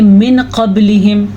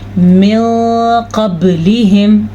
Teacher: वहाँ पे नून साकिन और तनवीन को छुपा के पढ़ते हैं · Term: इख्फा